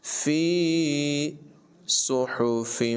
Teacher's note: صاد کی آواز پر ہوگی اور اس میں سیٹی کی آواز نکالیں گے